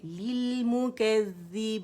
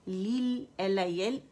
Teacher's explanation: ली की आवाज़ आनी चाहिए, मद नहीं बनाएंगे, लिल LIL, लिल मुकज़्ज़ी, ज़ैल मुशद्दद है, बारीकी से अदा होगा, लिल मीम पे जाएंगे, कंप्लीट रोलिंग करेंगे, ठीक है।